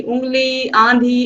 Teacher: तो देखिए, जब स्वर केवल मुख से बोले जाते हैं तो उनका रूप साधारण होता है, परंतु स्वर जब नाक से बोले जाते हैं तो उनके ऊपर चंद्र बिंदु लगाया जाता है। ऐसे स्वर नाक से बोले जाने के कारण अनुनासिक कहलाते हैं